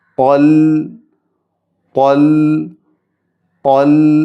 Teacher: സുക്കൂനുള്ള ലാമ് ശ്രദ്ധയോടുകൂടി അല്പം തവസ്സുത്തോടുകൂടി അൽ അൽ എന്ന് അല്പം നീട്ടിക്കൊണ്ട് അൽ എന്ന് വേണം ഉച്ചരിക്കാൻ